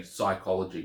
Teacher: from a Greek word that has P at the beginning and because we can't say that sound at the beginning that P drops off and so we say psychology